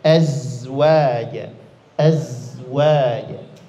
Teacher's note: Zai ini satu makhraj dengan huruf Sin